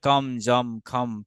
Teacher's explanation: অনুস্বার থাকলে এটা লেখার ক্ষেত্রে আমরা অনুস্বার লিখি ঠিক, কিন্তু উচ্চারণের সময় সর্বদা সব সময় আমাদের ম উচ্চারণ হবে। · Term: ম সাউন্ড